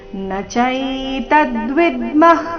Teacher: ವಿಸರ್ಗದ ಉಚ್ಚಾರಣೆ ಅರ್ಧ ಖ ರೀತಿ